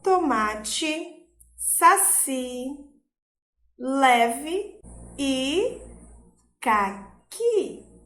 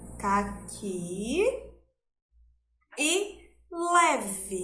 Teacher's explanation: como o E está na última sílaba e não tem o som forte, a gente vai suavizar na hora da pronúncia